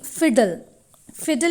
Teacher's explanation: there is the absence of vowel sound but still it can be considered as a syllable so nasals and laterals can be syllabic when represented phonetically a